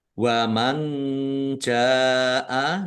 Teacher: nun sukun bertemu dengan huruf jim. Ikhfa dibaca samar-samar.